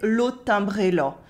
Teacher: The nasals are a bit more nasal than they could be with me, for example, and the A sounds more like an O. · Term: accent of rural Eastern France